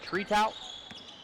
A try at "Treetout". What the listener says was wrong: The T on the end is silent. He's French, but he lives in New York. He's French-American.